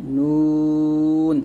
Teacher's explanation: জিহ্বার আগা তার বরাবর উপরে তালুর সঙ্গে লাগিয়ে একটা উচ্চারিত হয়